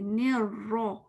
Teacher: आपने नोट किया RAW लिखा हुआ है, मीन्स के नी के बाद एकदम आपका फेस कैसा होना चाहिए, रॉ के लिए पीछे जबान उठनी चाहिए, ने रॉ। फिर रॉ में आपका स्माइली फेस नहीं रहेगा, क्योंकि आप जेर तो नहीं पढ़ रहे, आप तो जबर पढ़ रहे हैं, फतह पढ़ रहे हैं। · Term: रॉ मोटा है